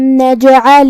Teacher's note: قلقلہ کا معنی ہے حرف ساکن کو ہلانا، لہذا ہم حرف الجیم کو ہلاتے ہوئے یہ کلمہ کو ادا کریں گے. پھر حرف العین کو ہم حلق کے درمیان والے حصے سے پڑھیں گے. آخری میں لام کے نیچے زیر ہے لہذا ہم زیر کو ظاہر کریں گے.